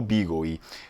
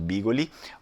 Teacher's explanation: o famoso L fôrculo, ele pode ser cortado na pronúncia ou ele pode ser falado cheio, né? Ele pode ser falado bigoli ou bigoi.